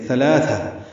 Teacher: ثلاثہ دونوں ثا نرمی سے ادا ہوں گے، لام باریک پڑ جائے گا. تنوین کے بعد حمزہ ہے تو اظہار ہوگا.